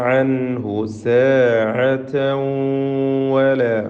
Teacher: അൻഹു എന്നതിലെ സാക്കിനായ നൂനിനെ ഇൽഹാർ ഹൽക്കി നൽകി മണിക്കാതെ വെളിവാക്കേണ്ടതാണ്. സാഅതൻ വല. തൻവീനിനെ ശേഷമുള്ള വാവിൽ ലയിപ്പിച്ച് മണിക്കണം.